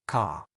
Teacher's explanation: in many British accents that R is much softer or even silent. So car might sound more like car.